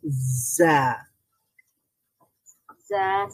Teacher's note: জিহ্বার আগাটা দুই দাঁতের মিডলে লাগবে নিচের